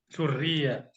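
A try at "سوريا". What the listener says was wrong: Nah, Suria. Ianya jangan bertasydid. Suria.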